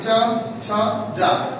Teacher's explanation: लेकिन अगर हमने बोला चलो तो आपका जीभ जाके ऊपर तालू में टच कर रहा है।